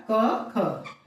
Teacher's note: तो जो क वर्ग के जितने भी वर्ण है वे क्या है? कंठ ध्वनि है।